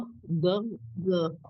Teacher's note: Kalafi yang shod sama lidahnya ada di belakang. D suaranya dari samping bukan dari depan.